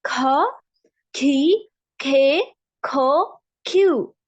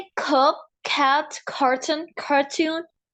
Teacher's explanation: इन सब में सी में मैं हा की आवाज निकाल रही हूँ।